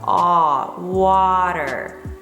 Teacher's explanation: The first is wa, and the second one is der. So make sure your wa is very long. It has a very long vowel.